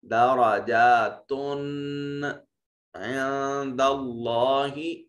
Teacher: یہاں نون ساکن کے بعد دال حرف اخفا ہے تو یہاں نون کو اپنے مخرج میں چھپا کر ادا کریں گے